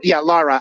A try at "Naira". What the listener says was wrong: No, with the N, it's Naira.